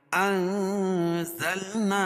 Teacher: نون ساکن کے بعد حروف اخفا کے 15 حرفوں میں سے زا ہے تو یہاں ناک میں آواز کو چھپا کر پڑھیں گے، انزلنا اور الیک دونوں الگ الگ کلمے ہیں تو یہاں مد منفصل ہوگا۔